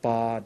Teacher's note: when you make that ba sound, your lips come to closure. It's the release of your lips that creates the ba sound.